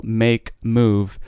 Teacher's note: or the M with a vowel make move there's a snap between when your lips are closed and when your lips are open